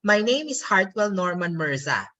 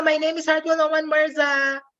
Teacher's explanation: Philippine English has a rising intonation at the end of declarative sentences. Remember, in the American English, you go down in terms of intonation if it's a declarative sentence.